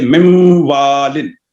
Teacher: Number دو، اچھا اس میں یہ ہے کہ نون کا جو غنہ ہے وہ واو میں اور یا میں شامل نہیں ہوا، واو پیچھے رہ گیا ہے۔ واو کو اس وقت تک ہونٹوں کو گول نہیں کرنا جب تک ناک میں ایک الف کی مقدار میں آواز ادا نہ ہو جائے۔ جب ادا ہو جائے تو اس کے بعد واو کو ہونٹوں کو گول کر کے واو کو ادا کرنا ہے۔